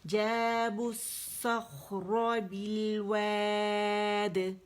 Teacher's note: یہ با زیر ہے تو یہ با زیر لام سے ملے بالواد, بالواد آواز اوپر جائے گی. اور 4 کاؤنٹس کے لیے مد عارض بنا رہے ہیں تو 4 کاؤنٹس کے لیے ہم اسے کھینچیں گے اور پھر دال پہ قلقلہ کریں گے اور وقف بالاسکان ہوگا.